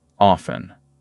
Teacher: And the word often, for most people, drops the T, often. So when a word looks strange, ask a simple question.